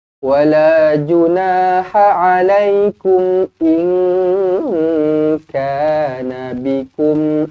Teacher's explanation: Nun kosong bertemu dengan kaf ikhfa hakiki dengung dua harakat.